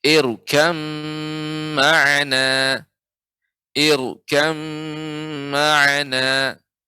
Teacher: Harus tebal ya dibaca, ro dibaca dengan tebal karena sebelumnya ada hamzah wasal namanya.